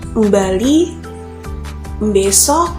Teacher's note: di Jawa khususnya daerah Jawa Tengah pengucapan huruf b sering diiringi dengan bunyi m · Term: bunyi em